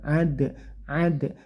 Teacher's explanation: ini namanya Qalqalah Sugra pantulkan atau bunyinya bendal gitu ya